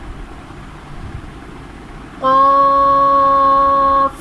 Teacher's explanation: قاف حروف مستعلیہ ہے، اسے ہمیں پر پڑھنا ہے، باریک نہیں پڑھنا